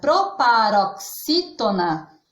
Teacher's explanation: a palavra proparoxítona é uma proparoxítona, porque a sílaba tônica desta palavra é o xi, que está na posição antepenúltima